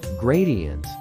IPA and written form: ˈɡreɪ.di.ənt (gradient)